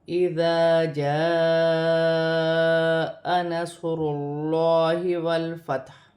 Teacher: یہاں پر بھی الف مدہ ہے، الف سے پہلے زبر ہے تو الف مدہ بنے گا، اور الف مدہ پر بڑی مد بھی ہے، مد متصل، اسے 5 الف کی مقدار تک کھینچ کر پڑھا جاتا ہے